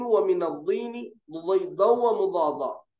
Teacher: बाजुए जबान का किनारा और ऊपर के सीधे या बाएं दाढ़ों से, सीधे या फिर बाएं से एक हर्फ निकलता दाद, सीधे या बाएं, लेकिन आसान जो तरीका है हमारे असातिज़ा जो हमको बताए, बाईं तरफ से आसानी से निकलता बोले तो बाईं तरफ से निकालना, और ऊपर के दाढ़ों को लगाना, नीचे नहीं लगाना।